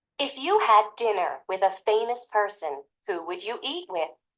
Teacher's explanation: Notice the stress on the word after the verb in the if clause. Notice the stress on the verb in the clause asking about the possible consequence.